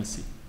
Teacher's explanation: Okay, so forms like in C, two morphemes, a minor syllable and a major syllable, so the verb to go, si, low tone, msi is two plural inclusive, we go. So the m is the prefix and it gets a high tone because it's next to a low tone, msi.